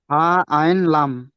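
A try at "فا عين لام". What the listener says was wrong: জি মাশাআল্লাহ, এটা বলেন।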